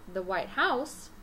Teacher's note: president of the united states when i say the white house i'm stressing the word house i'm saying it longer louder or with more emphasis